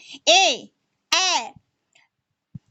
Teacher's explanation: कंठ तालव्य यानी कंठ का भी उसमें होता है, और तालव्य यानी तलवा पर भी जिह्वा का स्पर्श होता है।